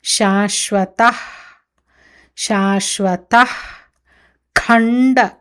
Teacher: ఖ ముందు వచ్చే విసర్గ ని జిహ్వాము మూలియ అంటారు అంటే మన నాలిక యొక్క ఆ మొదటి భాగం ఎక్కడి నుంచి అయితే శబ్దం